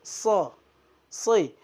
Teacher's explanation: So itu di dalam ilmu tajwid keluarnya dengan ujung lidah berada di antara 2 gigi seri.